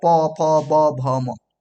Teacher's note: ओठ दोनों सटेगा, प फ ब भ म, ओठ सट रहा है ना। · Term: पवर्ग